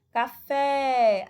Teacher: a sílaba tônica é o fé é a última sílaba